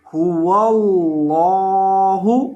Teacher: قل هو اللہ، اس لفظ کو آپ نے پڑھنا ہے هو اللہ، هو اللہ، ہا کے اوپر پیش ہے اور واو کو لام کے ساتھ ملا کر پڑھیں گے هو اللہ، اور لفظ اللہ کے لام کو یہاں موٹا کر کے پڑھیں گے